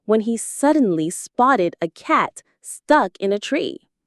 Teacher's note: Focus on the word suddenly. Give it a little bit of energy to show the surprise.